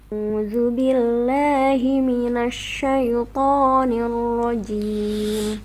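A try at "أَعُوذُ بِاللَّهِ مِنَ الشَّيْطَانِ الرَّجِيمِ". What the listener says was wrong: Minasya, huruf shinnya ini sya, shi, shu, tidak sya, sui. Nah, itu tapi ada terkesan mau masuk ke huruf shadnya ya. Punya shinnya, tebalnya, mau menebalkan shin.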